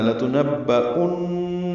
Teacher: نون کو با سے ملانا ہے